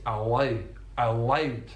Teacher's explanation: so it's a dark L not a light L on the L of allowed